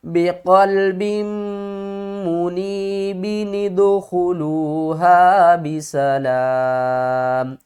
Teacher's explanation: نون قطنی کا رول کیا ہے، بقلب منیب ادخلوها بسلام، کیا کریں گے، تنوین والی ایک زبر کو ڈراپ کر دیں گے اور اس زبر کو نون کے نیچے لے آئیں گے، اور پھر اس نون کو دال کے ساتھ ملا کر پڑھیں گے